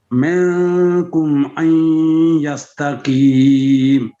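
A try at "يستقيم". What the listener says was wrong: بڑا قاف ہے.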